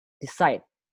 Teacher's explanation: kasih tekanan di silabus kedua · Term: word stress